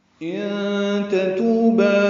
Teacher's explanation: ان تتوبا میں نون ساکن کے بعد تانی کی وجہ سے اخفا ہے، نون کی آواز چھپائیں گے